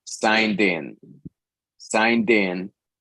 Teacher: the D moves over to meet the in and sounds din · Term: linking